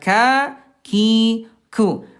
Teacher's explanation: huruf kaf ayah Bunda dari segi udara dia alhams keluar udara.